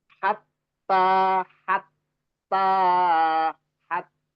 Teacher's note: yang tasdid ini ya betul-betul harus ditampakkan dua huruf ya bahwa itu dua huruf